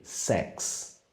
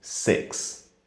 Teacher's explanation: Se você usa o E aberto demais, como se fosse um acento agudo, vira outra palavra também, sex. O correto seria um meio termo, como se fosse um E com um acento circunflexo, six.